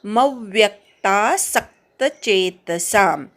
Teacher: मव्यक्ता मवर आघात, व्यवर पण आघात, सक्तमधल्या सवर पण आघात